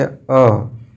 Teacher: एक बार मेरे साथ उच्चारण करिए अ, तो जीभ का पिछला वाला भाग आपका दब रहा है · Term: मध्य स्वर